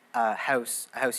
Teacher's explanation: Canadian raising so that's when the vowels start to move up in certain context